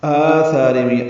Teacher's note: آثارہم آ مد بدل ہے، ثا مد اصلی الف مد ہے، 2 حرکات لمبا کریں گے، را باریک پڑھیں گے۔